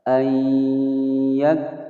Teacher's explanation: ada kaf berharokat sukun, ada desisan angin